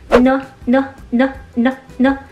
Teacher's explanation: 这个舌尖是贴在牙齿后面这个肉的这个地方的。然后这个过程呢，其实你把它用鼻子去震动出来，这个音就是前鼻音。